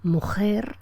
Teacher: realizar una articulación fuerte, velar, semejante a la castellana, mujer, o pueden conformarse con una realización laríngea más suave, posterior, que han oído a muchos hablantes andaluces, canarios e hispanoamericanos.